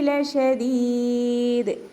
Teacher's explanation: കൽക്കലയുടെ ലെറ്ററാണല്ലോ ദാല്, അപ്പോൾ നമ്മൾ ഫുൾ സുക്കൂന് കൊടുക്കുക കേട്ടോ. ഫുൾ സുക്കൂന് കൊടുത്തിട്ട് നിർത്തുക.